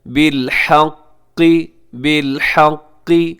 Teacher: قاف کے نیچے زیر ہے لیکن پھر بھی قاف موٹا رکھیے گا